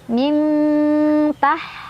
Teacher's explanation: dibacanya samar sambil berdengung. Samarnya lebih besar. Mintah, haknya halus, tipis, nggak ada kotoran.